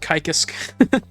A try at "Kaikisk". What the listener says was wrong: It's Kaikisk. Kaikisk. Enunciate the Kai more. Kaikisk.